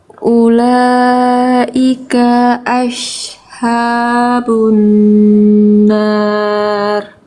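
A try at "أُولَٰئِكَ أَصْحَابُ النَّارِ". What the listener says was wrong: Bagus, tapi kafnya kepanjangan sedikit, cukup satu harokat aja.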